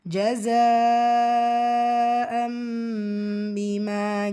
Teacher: Again இங்கே பார்த்தீங்கன்னா தன்வீனுக்கு அப்புறமா பா. ஸோ இது இக்லாப், நூனுக்கு பதிலாக மீமை புரட்டி ஓதுவோம், குன்னாவும் செய்யணும். · ஜஸாவில் இருக்கிறது ஒரே வார்த்தையில் மத்தை தொடர்ந்து வரக்கூடிய ஹம்சா, மத்து முத்தசல், 5 ஹரக்கத்தளவு நீட்டம் கொடுத்து ஓதணும்